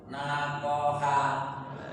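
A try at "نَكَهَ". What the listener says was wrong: Naka, bukan ko. Ya, nakaha.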